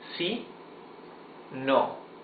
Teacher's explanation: in Spanish the vowels are very short sounds. It's not long sound like in English. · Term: very short and dry